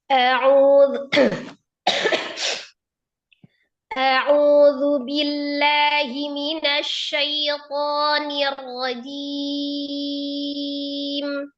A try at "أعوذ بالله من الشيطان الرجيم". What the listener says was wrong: Coba suaranya ditenangkan lagi, rileks lagi, jangan tinggi. Kemudian hamzanya jangan au. Ini lebih dari satu harokat Habibati. Au satu harokat. Au. أعوذ بالله من الشيطان الرجيم. Jadi lam, ini lebih afdol. Ada lam syadada, ya, lam tasydid.